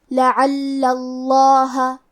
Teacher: کلمت لعل میں حرف لام پہ تشدید ہے زبر کا، تو ہم 2 حرف کے برابر لام کو پڑھیں گے اور زبر کو ظاہر کریں گے. اور لفظ الجلالہ مطلب کلمت اللہ کے لام کا حکم ہے تفخیم، تو ہمیں حرف اللام کو موٹی آواز میں پڑھنا ہے